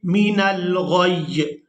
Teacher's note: یہاں پر ہم نے یا کے نیچے جو زیر ہے اس کو ہٹا دینا ہے، اس کو ہم نے ادا نہیں کرنا، اور غین کو یا کے ساتھ ملاتے ہوئے سختی کے ساتھ ادا کریں گے